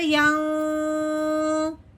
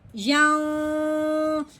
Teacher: نون ساکن پہ غنہ کرنا ہے، وہ بھی کون سا؟ اخفا کا۔